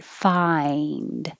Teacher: the eye starting open ah and rising to the e